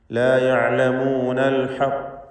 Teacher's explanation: അൽ ഹഖ് എന്ന് നല്ല പൂർണ്ണമായ ഖൽഖല കുബ്ര കൊടുത്തുകൊണ്ട് അവിടെ വഖഫ് ചെയ്യണം. കൂടെ ഖാഫിന് തഫ്ഖീമും വരണം.